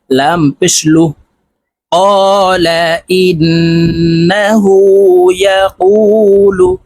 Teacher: ইন্নাহু, ক্বালা ইন্নাহু, ইয়া জবর ইয়া, কফ ওয়াও পেশ কু, পেশের বাম পাশে জজমালা ওয়াও মদের হরফ, তাই এই কফকে এক আলিফ টেনে পড়বো